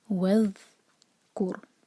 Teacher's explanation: ذیل ساکن پر ہم تھوڑا سا ٹائم دیتے ہیں، جس کو رخاوہ کہتے ہیں۔ اس کو جلدی نہیں پڑھنا، وَاذْکُر نہیں کہنا، وَاذْکُر۔